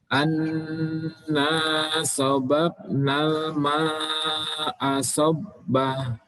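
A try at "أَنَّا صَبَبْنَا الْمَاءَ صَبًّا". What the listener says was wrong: Baik, qalqalahnya dikeluarkan. Anna sabab. Sabab. Langsung dimasukkan. Sabba. Dua harokat. Jangan langsung diputus. Sabba.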